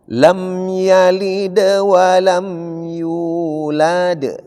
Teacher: Agak tipis. Ringan tapi tetap qalqalah. Cuma dia berada di tengah disebut qalqala sugro.